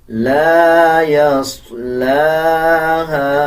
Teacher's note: صاد کو پر پڑھا جائے گا، لام کے اوپر کھڑا زبر ہے، 1 سیکنڈ لمبا کریں گے. ہا کے بعد الف ہے اور الف کے اوپر چھوٹا مد ہے، 3 سیکنڈ لمبا کریں گے.